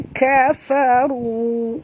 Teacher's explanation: Ru di sini tebal. Kena ra baris depan. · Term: Ru tebal